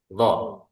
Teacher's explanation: Ujung lidah ini nempel di ujung gigi seri atas nih. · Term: huruf lo